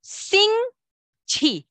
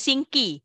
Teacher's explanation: Q ialah chi banyak angin. Okey, so kita ada sing chi, bukan sing ki.